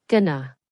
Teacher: And it is usually pronounced with two schwas